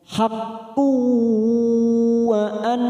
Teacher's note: Haq, haqqu, ada dumat tanwin bertemu waw, namanya bacaan idgham bi gunnah. Kita tekan 3 ketuk, siap masuk pada huruf waw.